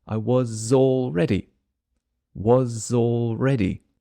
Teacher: if you want I was already planning this time where was the z sound or Zed sound joins the next word too